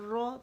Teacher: تو یہ تو ڈیفینیٹ موٹا پڑھا جائے گا, اس وجہ سے کہ زبر کے ساتھ مشدد ہے, اور مشدد زبر کے ساتھ جب ہوتی ہے یا پیش کے ساتھ ہوتی ہے تو اس کا ایک ہی قانون ہوتا ہے, رول ہوتا ہے کہ اسے موٹا ہی پڑھا جائے گا.